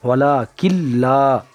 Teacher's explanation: ولا کلا کاف کو لام میں ملا کر پڑھیں گے اور نون کو چھوڑ دیں گے، اس لیے کہ لکھنے میں آتا ہے، پڑھنے میں نہیں آتا، یہ قاعدہ ہے، دھیان رکھیں گے۔ ولا کلا لام میں الف لگا ہوا ہے، الف سے پہلے زبر ہے، زبر کو کھینچ کر پڑھیں گے